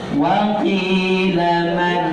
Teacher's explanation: Saat berhenti sejenak tanpa nafas selama 2 ketuk, posisi ujung lidah kita di langit-langit depan. · Jadi man, biarkan ujung lidah di atas, nempel, jangan dilepas. Jangan dilepas, apalagi nun sama ro satu makhraj langit-langit depan.